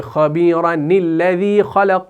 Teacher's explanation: خبیرہ کا جو الف ہے اس کو ڈراپ کریں گے